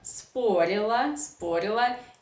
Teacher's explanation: You know that Russian reduction law works here. So o unstressed, according to Russian pronunciation laws, you should pronounce as a.